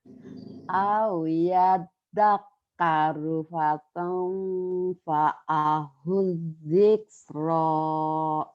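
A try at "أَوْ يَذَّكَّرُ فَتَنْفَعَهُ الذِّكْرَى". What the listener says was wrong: Ya tinggal hamasnya aja ya Bu ya. Dziksh itu hamas.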